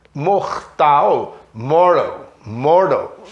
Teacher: Meio D a pronúncia desse T.